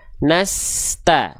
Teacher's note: Di huruf sin enggak boleh s-nya putus antara es dengan ta harus ngalir terus.